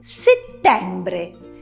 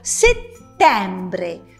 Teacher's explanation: Senti dove cade l'accento tonico? Settembre. Sulla seconda E. Quindi tu ti devi porre il problema se la seconda E di settembre è aperta o chiusa.